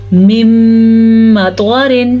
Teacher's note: نون ساکن کے بعد میم آ گیا تو نون کی حیثیت ختم ہو گئی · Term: ادغام بالغنہ